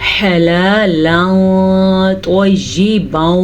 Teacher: تنوین کے بعد طوا حروف اخفاء میں سے آیا ہوا ہے، تو ہم اس تنوین کو چھپے ہوئے غنّے کے ساتھ پڑھیں گے